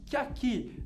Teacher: você pronuncia bem o a, do aqui, vogal forte. E o que você pronuncia fraquinho, vogal fraca. Que aqui, vogal fraca, vogal forte, uma sílaba só, 7 sílabas.